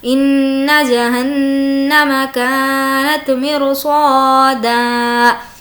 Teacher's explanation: ان نون پر تشدید ہے, غنہ ہوگا